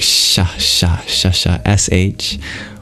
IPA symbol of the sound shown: ʃ